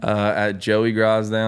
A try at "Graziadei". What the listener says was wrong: Can we give me a little more Z?